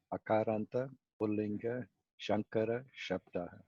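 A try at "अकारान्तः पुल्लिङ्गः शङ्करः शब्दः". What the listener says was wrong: When you say, you should not drop the visarga. Akarantaha, Pullingaha. Then Shankara Shabdaha. Shankara Shabdaha.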